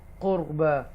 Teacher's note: रा साकिना से पहले ज़बर है इसलिए ये बोल्ड पढ़ा जाएगा